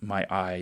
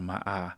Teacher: he won't say I, he'll say ah. So that that's called monothongization.